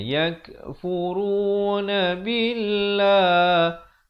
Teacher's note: Di sini perkataan Allah sebelumnya baris kasrah, jadi dibaca nipis.